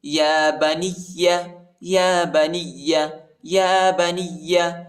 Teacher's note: نون کو یا کے ساتھ ملائیں گے، یا کو شدت کے ساتھ سختی کے ساتھ پڑھیں گے.